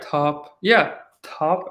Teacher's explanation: But yeah, top and stop. You will actually feel more air in the top. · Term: aspirated